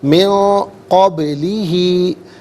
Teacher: من میں نون ساکن ہے، اس کے بعد قاف حرف اخفاء آ رہا ہے، تو نون ساکن کو اخفاء کے ساتھ پڑھیں گے، ناک میں آواز لے جا کر گنگنانا، اسے اخفاء کہتے ہیں